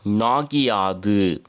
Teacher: எத்தனை அப்படின்னா அரை மாத்திரையாக குறைந்து ஒலிக்கும். குற்றியல் லிகரத்தில் வரும் இகரம் தன் ஒரு மாத்திரையில் இருந்து அரை மாத்திரை அளவு குறைந்து ஒலிக்கும். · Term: குற்றியல் லிகரம்